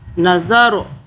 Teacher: یہ جو را ہے اس کو ہم موٹا پڑھیں گے کیونکہ اس کے اوپر جزم ہے، ساکن ہے